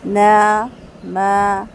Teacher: ایک جو نارمل غننے کی کیفیت ہے نا ناک میں، وہ محسوس ہوگی، لیکن آپ باقاعدہ اس کو ناک کے اندر لے کے جائیں تو یہ طریقہ غلط ہے، ٹھیک ہے؟